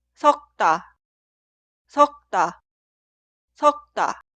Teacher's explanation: En este caso, las consonantes iniciales de las sílabas posteriores se pronuncian como sonidos forzados